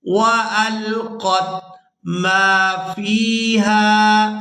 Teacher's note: یہاں میم کو الف مدہ کی وجہ سے اور فا کو یائے مدہ کی وجہ سے کھینچ کر ادا کریں گے